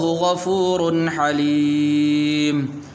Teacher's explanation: یہاں پر غنہ نہیں کریں گے اس لیے کہ آگے حا حروف حلقی میں سے ہے